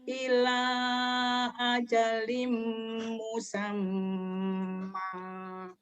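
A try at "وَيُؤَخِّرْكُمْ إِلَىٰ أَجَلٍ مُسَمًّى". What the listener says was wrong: Musamnya jangan ditahan ya. Yang ditahan M-nya. Musam jangan. Ila ajalim musamma. Yang ditahan M-nya. Dua-dua ini satu idgham biguna, satu guna.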